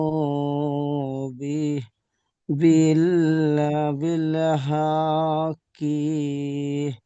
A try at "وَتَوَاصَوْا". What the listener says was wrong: ওই এইসব টান নেই, এগুলো টান হবে না। হা কি, এগুলো টান দিলে হবে না। ওয়াতাওয়াসাউ বিল হক।